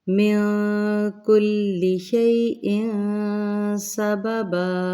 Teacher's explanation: من کل، یہ بھی تنوین ہے، تنوین کے بعد سین آ رہی ہے تو ہم نے یہاں پہ بھی اخفا کرنا ہے